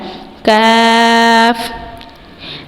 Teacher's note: یہ زبان کی جڑ اور تالو کے سخت حصے سے ادا ہوگا